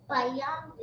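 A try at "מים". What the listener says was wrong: Not bayam. Not bayam. With the M. Mayam is water.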